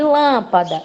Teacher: Mas aqui a sílaba tônica é o lã. Então, ela é proparoxítona porque é a antepenúltima sílaba.